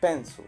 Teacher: Resulta que la sílaba que se pronuncia enfatizada es pen. Esto hace que la siguiente sílaba se pierda la vocal y se debilite. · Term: schwa